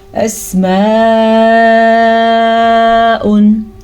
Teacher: इसकी मिकदार 2 सेकंड तक इस मद को हम लंबा करेंगे